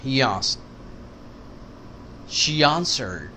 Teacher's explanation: ای کی وجہ سے وائی آ جائے گا بیچ میں